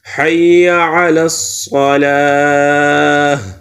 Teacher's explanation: آخر میں جب ہم وقف کریں گے تو یہ گول تا تبدیل ہوگا ہا میں ، تو ہا آخر میں ہا کی آواز آنی چاہیے، حی